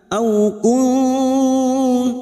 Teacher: nun sukun bertemu ta, ikfa hakiki, kita dengungkan selama 2 atau 3 harakat.